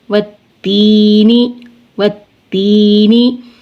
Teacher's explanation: لام کا تا میں ادغام ہو گیا · یہاں پہ لام تعریف کے بعد تا حرف شمسی میں سے ہے، لہٰذا لام تعریف کا اس تا میں ادغام ہوگا